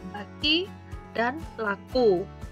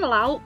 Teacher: Bunyi K terdapat pada posisi selain posisi akhir, sedangkan bunyi hamzah terdapat dalam posisi akhir.